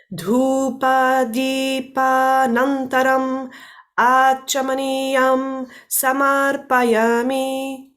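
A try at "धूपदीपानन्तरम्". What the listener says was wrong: Just have a look at the second syllable. So dhupa. Dhupadi. Even shorter. Dhupadi. Dhupadi. Dhupadipanamtara. Dhupadipanamtaram.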